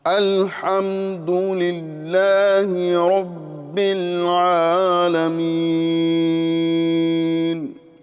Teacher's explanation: سب سے پہلے تو حمزہ کی ادائیگی پر ہم اگر غور کریں تو حمزہ یہ حلق کے نیچے والے حصے سے ادا ہوتا ہے۔ جی، نیچے والے حلق سے حمزہ کی ادائیگی ہوتی ہے اور یہ جھٹکے سے ادا کیا جاتا ہے